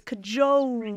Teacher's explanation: Not only the diphthong, but also that little extra schwa on there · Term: sneaky schwa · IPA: /kəˈʤoʊəl/